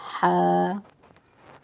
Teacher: हा जो है वह हलक के दरमियानी हिस्से से अदा किया जाता है हलक के दरमियानी हिस्से से हा अदा होता है हा को